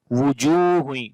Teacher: jim we long due to waw madda here